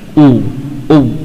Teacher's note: bagian belakang lidah memang ya secara otomatis akan ke belakang